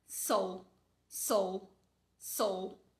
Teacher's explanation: A vogal é tão fraca, minha boca nem abre para pronunciar ela. É do S pro L, do S pro L.